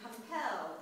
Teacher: the unstressed, stressed foot is an iamb